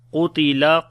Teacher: Qaf we read in heavy sound due to isti'la letter